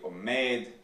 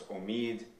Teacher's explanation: what was originally omed that becomes omid in Western dialects, like most Iranian dialects.